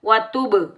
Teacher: व तुब, बा साकिन पर कलकला होगा। जब हम कलकला करेंगे डबल साउंड आएगा, टकराव पैदा होगा।